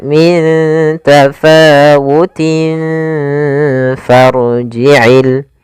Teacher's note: Makhraj huruf fa sendiri yaitu gigi atas menempel dengan bibir bawah. Kemudian ditahan gunahnya.